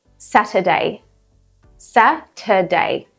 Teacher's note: the schwa sound, which is common in Saturday because we don't pronounce the R.